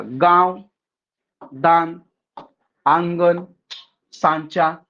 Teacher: जिन स्वरों का उच्चारण नाक और मुंह से होता है और उच्चारण में लघुता बनी रहती है वे अनुनासिक स्वर होते हैं। जैसे बघा गांव, दान, आंगन, सांचा इत्यादि अनुनासिक स्वर है।